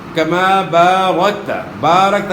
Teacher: کما بارکتا، کما بارکتا، یہاں جو ہے نا الف مدہ ہے، الف سے پہلے زبر ہے، تو زبر کو آپ تھوڑا کھینچیں گے تو الف ادا ہوگا ، الف مدہ ہے، کما بارکتا، بارکتا، یہاں بھی الف مدہ